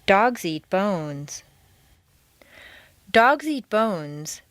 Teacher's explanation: intonation stays on the nouns